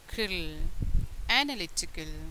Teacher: the stress on the third syllable so it became analytical